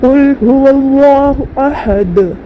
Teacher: दाल के ऊपर 2 पेश है, आगे आए तो वक़्त करेंगे तो जज़म देकर सांस तोड़ेंगे, और यहाँ पर दाल के ऊपर जब जज़म आ जाएगी तो यहाँ पर कलकला होगा। तो कुल हुवल्लाहु अहद, कलकला करते यहाँ पर दाल पर पढ़ेंगे हम लोग।